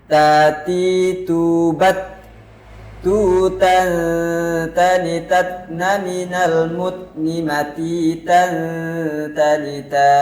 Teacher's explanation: ta juga termasuk dalam huruf yang istifal atau pangkal lidahnya datar, sehingga menghasilkan bunyi huruf ta menjadi tipis.